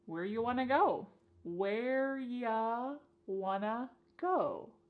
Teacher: So, this is a similar reduction to our first question. You becomes y and want to becomes wanna. · You becomes ya, and want to becomes wanna.